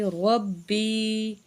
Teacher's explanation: را کے اوپر زبر ہے، موٹا کر کے پڑھیں گے